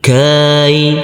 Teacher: Huruf kaf yang berfathah A ini bertemu dengan huruf ya sukun. Kita lembutkan karena ini adalah bacaan layin atau bacaan lin